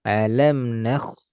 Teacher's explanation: Nakh tebal kho karena diawali fathah